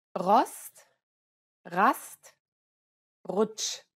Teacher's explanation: German R, however, actually comes from the throat using the back of the mouth.